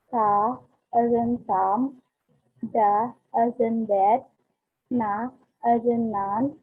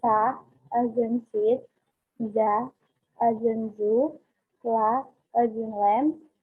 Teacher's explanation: putting the tongues on the alveolar ridge, this is the gum line above the top teeth